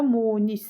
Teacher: Munis sözündə munis sadəcə u uzanır. Birinci sa uzun tələffüz olunur.